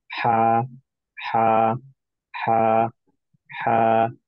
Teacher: যে হা এর মাখরাজে, যেহেতু এটা এপিগ্লোটিস দিয়ে যখন জেনারেট হয়, তখন হা এর মাখরাজে আপনি অ্যাকচুয়ালি কোনো ভাইব্রেশন জেনারেট করতে পারবেন না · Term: স্মুথ সাউন্ড